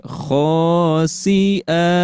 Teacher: Jadi kalau misalkan berhenti di sini, maka dibacanya cukup dibaca panjang 2 harokat saja dan menjadi bacaan dari mad iwad.